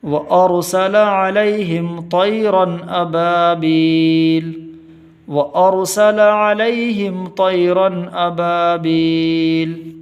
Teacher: طا کی آواز موٹی ہوگی